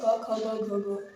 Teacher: ये कंठ से उच्चारित होते है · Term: क वर्ग